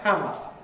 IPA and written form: ˈhæmə (hammer)